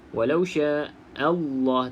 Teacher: okey hati-hati bila mana Hamzah ni bertemu dengan lafzul jalalah sebab lafzul jalalah ni dibaca dengan tebal sebab sebelumnya baris atas